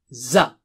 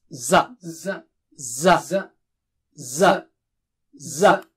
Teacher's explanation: Touch the tip of the tongue to the edge of lower teeth and blow with a strong sound.